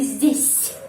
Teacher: Tanda pelemah melemaskan bunyinya huruf S.